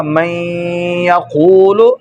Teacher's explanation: نون کو یا کر کے یا کا یا میں ادغام کر دیں گے، یہ بن جائے گا من یقول.